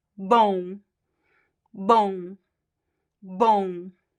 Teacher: o becomes nasal, and depending on the accent, it could be bon, just like one single on sound, or we could also have like a small diphthong here, like on, like o, but with the nasal sound.